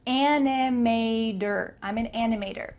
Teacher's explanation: Make sure that the T changes to a D in American English.